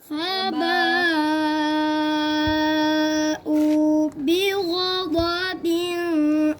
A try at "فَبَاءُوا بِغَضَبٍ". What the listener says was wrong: इधर गुन्ना क्यों कर रहे हो?